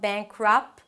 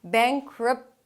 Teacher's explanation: Schwa, reduced vowel. Don't open your mouth too much. So it's not "beink-rahp" - "beink-r'p".